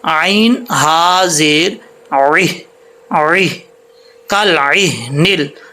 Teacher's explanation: عین کو حمزہ نہیں پڑھنا، عین کو عین ہی پڑھنا ہے